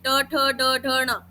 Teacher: फिर मूर्धा, उस अपर टीथ के मसूड़े के पीछे थोड़ा सा, जिसको हम अपर पैलेट बोलते हैं, वहां पे आप देखो आपकी टंग टच करेगी